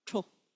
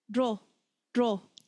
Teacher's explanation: So the sound is still the same. It's still this TR-ish sound, but it's gone from mid-hard, tro, to soft, dro, just by adding the prefix letter.